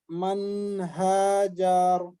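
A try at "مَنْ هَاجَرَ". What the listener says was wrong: Man hajar. Ja-nya jangan dipanjangin, Pak ya. Man hajar.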